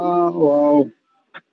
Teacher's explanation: ওয়াওটা দুই ঠোঁট গোলাকার হয়ে যাবে।